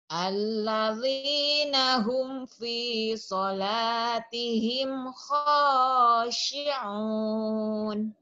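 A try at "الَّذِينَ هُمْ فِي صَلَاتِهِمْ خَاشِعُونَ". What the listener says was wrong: Alladzina hum fi salatihim khatihim. Alladzina hum fi salatihim khashi'un. Sama kha-nya ya, belum keluar.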